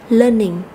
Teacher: thì từ này có hai âm tiết chúng ta sẽ nhấn mạnh vào âm Tiết đầu tiên